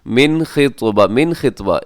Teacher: رکنا ہے۔ فیما عرضتم بہ، ایسے، من خطبۃ النساء، من خطبہ، من میں نون ساکن ہے، نون ساکن کے بعد خا ہے، یہاں پہ آپ کریں گے اظہار، جسے اظہار حلقی کہا جاتا ہے ، اس کی وجہ یہ ہے کہ خا حروف حلقی میں